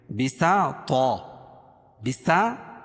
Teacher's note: سین کو باریک اور طا کو موٹا کیونکہ طا حروف مستعلیہ میں سے ہے